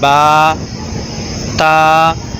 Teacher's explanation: نہ حمزہ پڑھا جائے اور نہ آخر میں ہا پڑھا جائے، بلکہ با، تا یہ ہوا میں ختم ہوتے ہیں۔